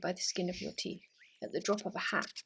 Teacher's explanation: an anapestic meter which is two unstressed syllables followed by a stressed one